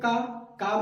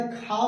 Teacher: जिसके उच्चारण में कम हवा निकले, वो क्या हो जाएगा? अल्प प्राण होगा। और महाप्राण मतलब ज्यादा हवा